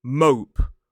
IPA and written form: məʊp (mope)